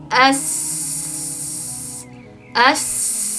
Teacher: Pastki tishimga tagiga uch tegyapti, tishlarim bir-biriga qamashgandek bo'lib, ya'ni bir-birini ustiga bostirilyapti va havo chiqyapti. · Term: sin